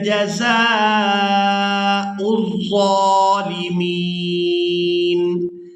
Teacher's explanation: زا کو کھڑی زبر اور مد کی وجہ سے کھینچ کر ادا کریں گے